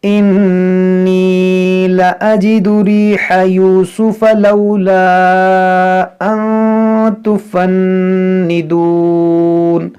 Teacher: ये मद मुनफसिल है, अलिफ मद्दा के बाद हमज़ा दूसरे कलमे में है, तो इसको खींचेंगे 3 अलिफ के बराबर। · यहाँ पर नून मुशद्दद है तो यहाँ पर भी गुन्ना करेंगे